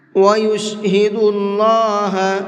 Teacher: اللہ کے لام کو منہ بھر کے پڑھیں گے، اس لیے کہ اللہ کے لام سے پہلے پیش ہے